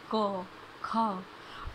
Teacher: आप उच्चारण भी करके देखेंगे, क, ख, उसमें कहीं भी हमारे होठ नहीं मिल रहे, दांत नहीं मिल रहे। ठीक है, तो वो सीधी साउंड जो निकल रही है गले से निकल रही है, हमारे कंठ से निकल रही है, इसको इसलिए इसको बोलते हैं कंठ्य।